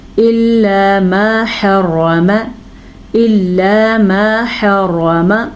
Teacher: پھر سے حا را پر، حا کے تلفظ کا دھیان، میم کو کھینچ کے پڑھنا ہے، آگے الف مدہ ہے · لام کو لمبا نہیں کرنا، لام پہ زبر ہے